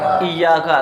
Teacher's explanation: تو الف ہونے کی صورت میں یا کو 1 الف کے برابر کھینچ کے پڑھیں گے اور تشدید ہونے کی صورت میں یا کو ہم 2 مرتبہ پڑھیں گے.